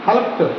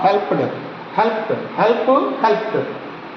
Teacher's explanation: if you want to pronounce the past tense of the regular verb, we pronounce like T sound.